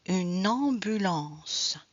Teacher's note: On a la liaison N. So we do have the N link.